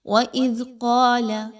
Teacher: وَإِذْ قَالَ مُوسَى لِقَوْمِهِ إِنَّ اللَّهَ يَأْمُرُكُمْ، وَإِذْ قَالَ، ذال کے اوپر دیکھیے تو جزم کی علامت ہے، ذال جو ہے وہ بہت ہی نرمی کے ساتھ پڑھے جانے والا حرف ہے، اس کو زا کی طرح مت پڑھیے، اس کو بہت سافٹلی پڑھا جاتا ہے، زبان کو تھوڑا سا باہر نکالیے اور دانتوں کے پچھلے سرے کے ساتھ ملائیے تو ذال کی ادائیگی کی جاتی ہے۔